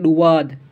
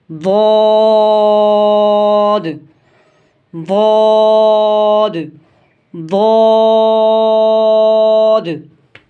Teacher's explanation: ये ज़बान की करवट और ऊपर के दाढ़ों की जड़ों से अदा होता है। मिसाल के तौर पे ये हाथ है, समझ लें ये ज़बान है, ये जो साइड है इसे बोलते हैं करवट, और वो जो साइड है उस तरफ वाली इसे बोलते हैं करवट।